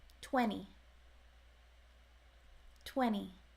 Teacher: so again there's no T or D sound